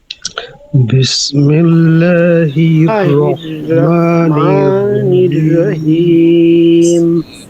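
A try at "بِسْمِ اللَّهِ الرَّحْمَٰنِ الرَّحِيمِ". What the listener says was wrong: বিসমিল্লাহির, রটা মোটা হবে, বিসমিল্লাহির রহমানির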